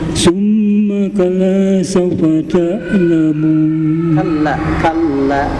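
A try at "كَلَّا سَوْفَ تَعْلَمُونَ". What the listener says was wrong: Kallanya ditahan ya. Summa kalla Ya, saufa ya, saunya tetap satu kata ya. Saufa ya, satu suku kata saunya.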